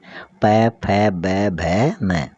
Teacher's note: इनको उच्चारित करते हैं तो अपने होठ पास पास आते हैं। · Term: ओष्ठ स्पर्श व्यंजन